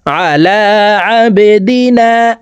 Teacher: বা কলকলার হরফ নিচের দিকে ধাবিত করে ধাক্কা দিয়ে উচ্চারণ করতে হবে। দেখুন বার নিচের দিকে ধাবিত করা ত্রিভুজ চিহ্ন দেওয়া আছে।